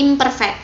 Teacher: kemudian berubah menjadi m yang merupakan nasal bilabial nahkoda Meme ini hanya berubah sebagian saja menjadi m tidak seutuhnya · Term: asimilasi parsial